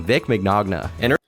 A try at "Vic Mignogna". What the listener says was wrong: It's Vic Mignogna. The second G is silent. It's Vic Mignogna. Vic Mignogna.